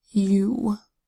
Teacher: makes four vowel sounds you have a short u sound ah a long u sound which is really a consonant Y sound yeah combined with a long double O sound ooh you and